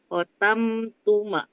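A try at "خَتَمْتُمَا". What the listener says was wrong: Ma-nya panjang. Ma-nya panjang, Ibu.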